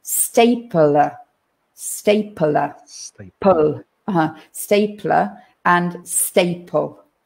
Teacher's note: now it's a little bit it sounds a bit strange because between the p and the l we have that schwa sound we kind of put another vowel in there